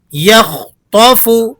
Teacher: خا اور تو یہ دونوں حروف مستعلیہ میں سے ہیں جنہیں ہر حال میں پر یعنی موٹا پڑھا جاتا ہے۔